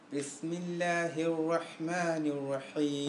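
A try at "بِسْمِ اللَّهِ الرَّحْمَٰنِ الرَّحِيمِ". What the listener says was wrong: I think you can all sense that, yeah? It's too squeaky. I think you should practice that.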